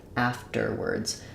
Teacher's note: in afterwards, the stress is on the first syllable